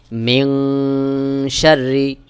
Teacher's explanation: মিম নুন জের মিন সিন জবর সার জের মিন শাররি এখানে নুন সাকিনের পরে ইকফার হরফ শিন এখানে অবশ্যই গুন্নাহ করতে হবে এটাকে বলা হয় ইকফা গুন্না সহি উচ্চারণ হলো মিন শাররি মিম